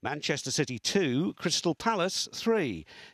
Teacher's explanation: when the scores are different both are accented